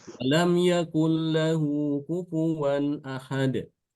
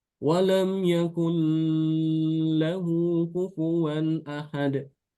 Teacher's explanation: Kalau bacaan kita diidghamkan tapi tidak digunakan. Idgham tapi tanpa gunnah.